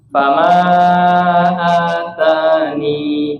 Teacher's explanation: Yang pertama, atani, ni-nya dibaca panjang ya, ni-nya dibaca panjang karena di sini ada ya sukun.